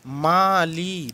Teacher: মালি দুটোই টেনে পড়া আ ধ্বনি এবং ই ধ্বনি মালি দুটোই টেনে পড়া যাচ্ছে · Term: পূর্ণ স্বরধ্বনি